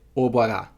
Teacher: And to woman, you get obwara, and that's by the woman, and you get the low version of the suffix.